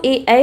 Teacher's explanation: कंठ और तालू दोनों की सहायता से जो बोले जाए